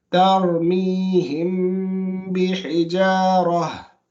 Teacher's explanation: you're not going to read the noon clearly or the meme clearly, but that it's going to be a case of ikhfa or a hiding